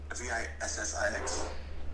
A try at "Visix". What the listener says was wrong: Just one S.